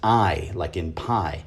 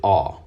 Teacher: he used to pronounce the 16th Hebrew character, the ayin, as I, like in pie, but now he pronounces it ah